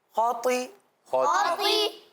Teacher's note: پہلا حروف مستعلیہ میں سے خا ہے, دوسرا تو ہے, دونوں کو پر پڑھیں گے اس طرح